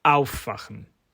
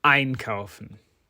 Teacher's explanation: the verbs which had the stress on their first syllable contain the prefixes auf, ein, aus, mit, zu, and an, all of which are words in their own right.